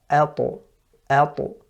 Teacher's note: Ab, with the ta, so it depends on the makhraj. So the ta, for example, it's from the tip of the tongue with the roots of the upper incisors. That's where it touches and that's where it separates. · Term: qalqala